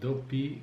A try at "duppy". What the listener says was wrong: Don't say dopey, dopi. Right, D-U-P-P-Y.